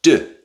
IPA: d